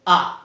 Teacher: तो इसमें जिह्वा का मध्य यानी बीच का भाग सक्रिय है, इसलिए ये मध्य स्वर है